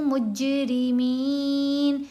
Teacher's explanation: را کو باریک پڑھیں گے. میم کے نیچے زیر ساتھ یا ساکن، یا حرف مدہ ہے، میم کی آواز کو لمبا کھینچ کر پڑھا جائے گا. نون کو ساکن کریں گے، نون کے اوپر زبر نہیں پڑھی جائے گی وقف کرنے کی صورت میں.